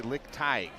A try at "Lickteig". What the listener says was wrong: It's more Teague.